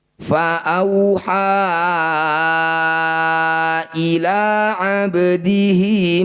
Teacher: panjangkan Hi ini dua harakat atau satu ayunan saja